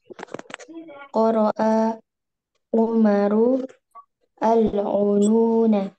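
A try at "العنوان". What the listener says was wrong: Kalau bisa disambung ya. Alkitabah menjadi Qara'a Umarul. Bukan Umaru al. Ya, kelamaan ya. Yang benar Qara'a Umarul Kitabah.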